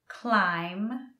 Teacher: that B in climb is always silent